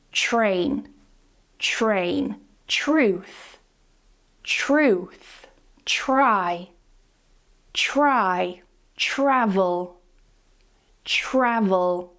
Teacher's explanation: make sure that you're pronouncing that CH and R together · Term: assimilation